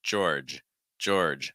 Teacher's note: So you have an or sound, then add a j sound before it, and then finish with a j. Finish, make sure that that last g sound is voiced. So it's finishing on a j